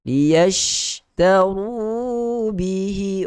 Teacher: hukum ra di situ adalah hukum ra yang tebal. Sebab ra itu adalah berbaris hadapan.